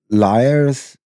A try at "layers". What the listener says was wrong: sounded like you said liars.